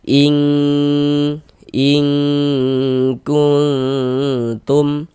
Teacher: Di sini yang kita temui nun sukun. Bunyi nun sukun kita samarkan. Kemudian kita dengungkan. Jadi bagian ing-nya tuh suaranya itu kita tahan. · Kemudian kita dengungkan. Jadi bagian ing-nya tuh suaranya itu kita tahan. Kita panjangkan sejenak kira-kira sepanjang dua harakat. in in kuntum nun nun sukun setelahnya huruf ta. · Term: ikhfa, ikhfa hakiki